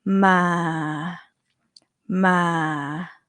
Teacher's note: focus on your throat you're going to hear that it's going low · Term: low tone